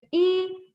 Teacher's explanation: this is the first tone. So you stretch it.